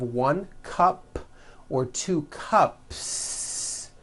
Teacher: there's no voicing at the end of that word the S remains unvoiced one cup two cups that's easy you already do this I'll